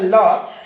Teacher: ल भी आप बोलेंगे ल, तो जिह्वा दांत के पास आ जाती है